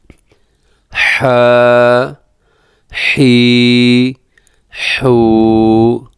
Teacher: اس کی آواز اس ہا کے ساتھ نہ مل جائے، اس جیسی نہ ہو جائے، تو اس کو بھی ذرا حلق سے ادا کرنا ہے